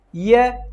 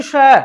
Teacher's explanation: अब आप वायु जो है उसका अनुमान आप लगा सकते हैं कि य जब बोलेंगे तो जो श्वास है वो कम बाहर आता है, लेकिन श जब बोलेंगे तो श्वास ज्यादा बाहर आता है